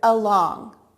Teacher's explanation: we hear the UH like short you uh in along at the beginning of that word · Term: schwa sound